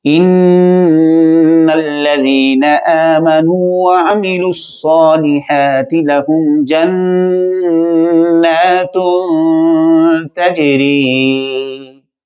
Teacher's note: ان الذين آمنوا وعملوا الصالحات لهم جنات تجری. اب یہاں پہ میں نے دو غنے کیے ہیں جو مشدد کے آئے ہیں، اور ایک غنہ کیا ہے میں نے اخفا کا